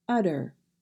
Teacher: We do not say a sharp T in that word, so we pronounce it utter.